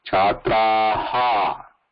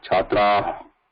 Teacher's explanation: Ha has a vibration and visarga no vibration.